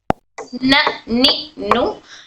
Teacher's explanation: इधर से तीनों दांतों के अंदर के जो हमारे मसोड़े हैं वहां मसोड़ों को टच होकर हर नून अदा होता है